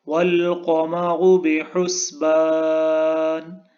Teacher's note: قاف بھی موٹا پڑھا جائے گا اور را بھی اس کو تھک ساؤنڈ میں پڑھا جائے گا۔